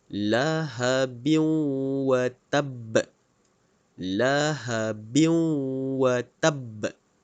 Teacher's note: ghunnah yaitu roh Wow disini maka jadilah dia idgham maal ghunnah masukkan bunyi tanwin ke dalam bunyi wow Hai lahabiw watab lahabiw watab dan perlu dengung dua harket lahabiw